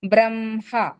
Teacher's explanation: రాసేటప్పుడు హ కి మా వత్తు కింద రాస్తాము కానీ ప్రొనౌన్స్ చేసేటప్పుడు మా ని ముందు పలుకుతాము హ ని తర్వాత పలుకుతాము